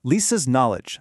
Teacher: that K is completely gone, just like our rules said it would be